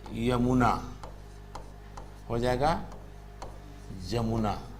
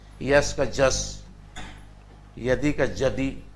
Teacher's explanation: य का उच्चारण ज की तरह भी हो रहा था जो व्यंजन है